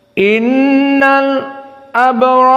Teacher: bertemu lam sakinah dengan Hamzah maka Al Abror di sini disaktah dua harakat saja